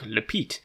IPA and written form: lpiːt (lept)